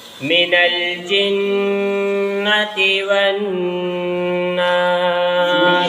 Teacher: اب جو ہے قرآن کریم جہاں جہاں پڑھو گے اور وہ نون اور میم پر تشدید دکھ جائے تو وہاں اسی طرح غنہ کرنا ہے۔ 1 الف کی مقدار ناک میں آواز کو چھپا کر رکھنا ہے، نون اور میم کی آواز کو